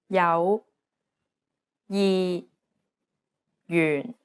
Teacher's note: and one of the most confusing aspects is the J consonant although it's represented as a j it actually sounds like an English Y sound